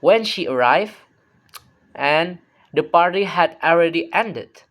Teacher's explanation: Each half has its own pitch peak, two tone units in one sentence.